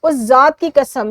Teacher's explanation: حمزہ لگا کر ذات کی آواز کو لمبا کیا گیا ہے